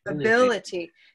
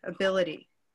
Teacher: this suffix is so sticky, it makes the stress fall just to before it, ability. Can you think of some other words that end with itty, I-T-Y?